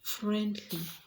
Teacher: Friendly will fall on the first syllable